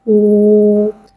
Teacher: واو مدہ کو ایک الف یعنی 2 حرکات کے برابر کھینچ کے پڑھیں گے اور پیش کو ہونٹوں کی گولائی کے ساتھ ادا کر کے پڑھیں گے۔